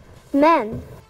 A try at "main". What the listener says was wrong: Make it long. Make it long.